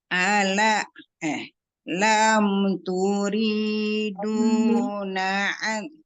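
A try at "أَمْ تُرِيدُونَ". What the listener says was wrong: Turidu, bukan lam.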